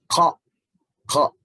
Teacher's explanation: Huruf qaf ini berada di pangkal tenggorokan